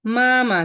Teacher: মা এখানে flat tone